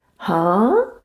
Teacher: when you raise your pitch to show confusion. Huh? That's the second tone.